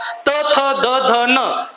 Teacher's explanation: त, थ, द, ध, न या व्यंजनांचा उच्चार करताना आपल्या जिभेचा स्पर्श हा दाताला होणं अपेक्षित आहे.